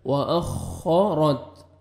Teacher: و اخا, و اخا, اور را کو مرزبر ہے, را کو موٹا کرنا ہے, تا کا لائٹ سے ساؤنڈ آئے گا